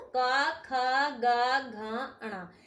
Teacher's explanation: ये सारे साउंड का, ख, ग, घ, अणा, ये गले से निकलते हैं।